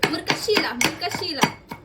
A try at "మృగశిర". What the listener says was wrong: మృగశిర. మృగశిల అన్నారు, మృగశిర అంటారు.